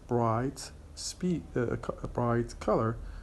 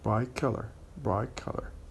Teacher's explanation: The word bright ends with the T sound, and the word color starts with K sound. When we say this expression in fast speech, in connected speech, the T will change into K to be similar to the K sound at the beginning of the word color. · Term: regressive assimilation